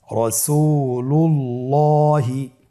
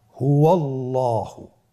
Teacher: আল্লাহ শব্দের আগেই, মানে আল্লাহ শব্দের দ্বিতীয় লামের আগেই আপনার জবর এসেছে, তাহলে আল্লাহ শব্দের দ্বিতীয় লামটিকে পোর করে পড়তে হবে